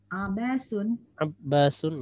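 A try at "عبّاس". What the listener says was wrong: Ya, di sini ada tasdid.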